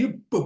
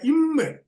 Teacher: அதை இரண்டும் இதை ஈருதடுகள் அந்த ரூ மாத்திக்கினா ஈருதடுகள் பொருந்த பிறக்கும் என்றாலும் பகரம் உள்ளிருந்து வரும் வாய் காற்றாலும் மகரம் மூக்கு காற்றாலும் பிறக்கும்